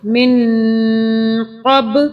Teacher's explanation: نون کو 2 سے 3 سیکنڈ کے لیے ناک میں رکھیں گے. نون کو غنہ کے ساتھ پڑھیں گے.